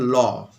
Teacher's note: যে ধ্বনি উচ্চারণের সময় শ্বাসবায়ু জিভের দুপাশ দিয়ে নির্গত হয় তাদেরকে বলা হয় পার্শ্বিক ধ্বনি